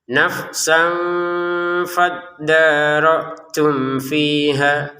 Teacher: Jadi ini ya, sekali lagi dibaca dengan samar. Samarnya disempurnakan 2 harokat, baru ke harokatnya fa.